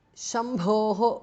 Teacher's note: bhas mahapranah, visarga changes to repha. Jayati Shambhor Jayati because of Sandhi.